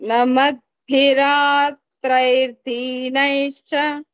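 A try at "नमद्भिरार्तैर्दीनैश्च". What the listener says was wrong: Again, you are saying the same thing, but there is no ra sound. Namadbhirartair dinaischa. It's not dina. Dina and dina, there is a lot of difference. Dina, it is not dinaischa. Dinaischa.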